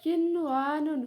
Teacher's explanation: Huruf nun sukunnya tetap dibaca jelas karena nun sukun bertemu dengan wawu dalam satu kata. Hukumnya tetap izhar, bukan lagi idgham bi gunnah ya.